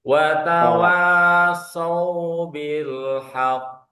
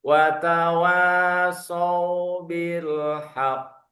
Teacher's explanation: Nah, ada tasjidnya ditahan selama dua harakat.